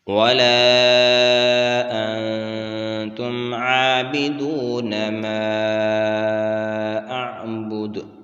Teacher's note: ما اعبد، مد منفصل ہے ما، اور اس کو 3 الف کی مقدار کھینچ کر پڑھیں گے۔ دال کے اوپر جب وقف کریں گے تو یہ ساکن ہوگا اور اس کے اوپر قلقلہ کریں گے۔